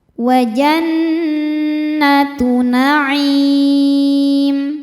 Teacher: Cara membacanya berdengung. Tahan dengungannya kurang lebih dua harakat. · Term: ghunah musyaddadah, gunnah musyaddadah